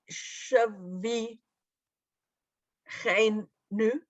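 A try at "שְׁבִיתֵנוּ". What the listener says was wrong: That's a Tav.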